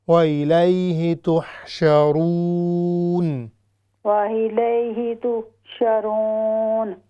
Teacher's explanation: یہ جو آخر میں رون ہے یہ ہونٹوں کی گولائی سے ہوگی